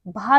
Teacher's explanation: option B हमारा भा जो है वह ओष्ठ से उच्चारित होता है और महाप्राण भी है और घोष व्यंजन भी है